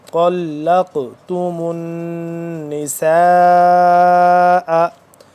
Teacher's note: पढ़ेंगे त लाम ज़म काफ ज़बर लक लक देख रहे हैं कफ के ऊपर कलकला है ये काफ साकिन है तो इस पे हम कलकला करेंगे